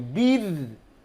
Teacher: রটাকে বারিক করতে হবে, পাতলা করতে হবে,